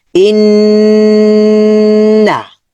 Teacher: এখানে গুন্না হয়েছে, ধরে রেখেছি।